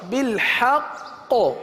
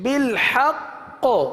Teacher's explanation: وقف میں قلقلہ مشدد ادا ہوگا، کیونکہ تشدید وقف میں باقی رہتی، ختم نہیں ہوتی، اس لیے یہاں قلقلہ ہوگا۔ بالحق، حق، اگر یہاں قلقلہ مشدد نہ کیا تو قاف حذف ہو جائے گی، بالحق، ایک قاف حذف ہوگی، قلقلہ ضروری ہے۔